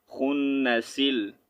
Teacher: اگر وقف نہیں کریں گے تو یہ سین اور لام کو آپس میں جوائن کریں گے